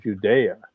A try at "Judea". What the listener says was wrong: right, but that's actually was pronounced Judea. There was no J.